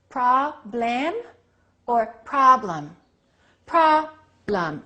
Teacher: stress the first one reduce the second one